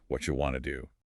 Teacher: In natural connected fluent speech, a native speaker will almost never pronounce every single syllable crisply. The boundaries between the words dissolve and it becomes a single phonetic block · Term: connected speech